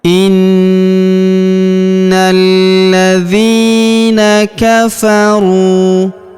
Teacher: huruf ru kita panjangkan 2 harokat karena waw sukun di depannya, alifnya tidak dibaca.